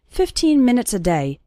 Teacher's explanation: the last two syllables of minutes become very small and just serve to connect with the word day 15 minutes